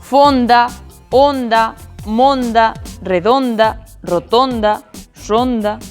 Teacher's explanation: E hai o pechado tamén na inmensa maioría das acabadas en onda.